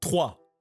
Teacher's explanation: Instead of doing with the tongue, try doing it with, you know the thing that hangs at the back of your throat. Try to make it move intentionally. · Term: French R